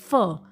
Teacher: फ में ऊपर के दांत नीचे वाले होठ पे आ रहे हैं · लेबियो का मतलब है लिप, डेंटल का मतलब होता है टीथ. तो the sounds which are produced by touching the lower lip to the upper teeth. नीचे वाला होंठ और ऊपर के दांत जब यूज़ होंगे तो आपका लेबियो डेंटल बनेगा.